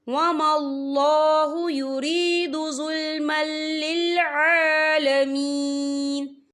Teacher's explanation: علیک بالحق وما اللہ یرید ظلما للعالمین، یہ دیکھیں ظلمل، یا میم کے اوپر تنوین ہے، تنوین کے بعد جو ہے لام آ رہا ہے، اور لام جو ہے حروف یرملون میں سے ہے تو یہاں پر ادغام ہوگا، اور ہم اسے بنا غنّے کے پڑھیں گے